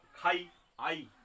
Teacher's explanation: পরের যে স্বরবর্ণটা আছে ই, এটা কিন্তু পুরোপুরি উচ্চারণ হচ্ছে না, কম উচ্চারণ হচ্ছে। তাহলে খাই, আই, আটা উচ্চারণ হচ্ছে, কিন্তু ইটা কম উচ্চারণ হচ্ছে। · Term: অর্ধস্বর